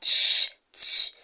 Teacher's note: Notice how CH starts like tss, tss, tss. So you have ch, ch, and it ends in sh, sh, sh. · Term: affricates